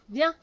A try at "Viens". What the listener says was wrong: C'est un peu mieux, mais un peu plus haut.